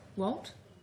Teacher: One way for her to ask for an employee's opinion is simply to say his name with a rising intonation or tone.